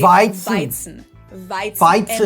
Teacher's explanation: Weizen. V, and the Z is pronounced like a TS sound